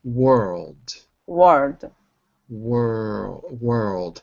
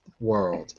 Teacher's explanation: it's an L, but you don't make contact. Your tongue doesn't touch the normal spot where the L is. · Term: soft L